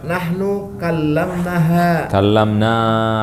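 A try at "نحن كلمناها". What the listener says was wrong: Panjang. Nah, karena kalau kita bilang kallamnaha hunna. Kalau kallamnaha jadi nahnu. Harus panjang pendek harus benar.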